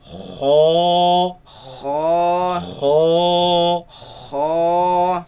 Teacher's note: So the root of the tongue raises against the uvula, and the commotion is what makes this sound.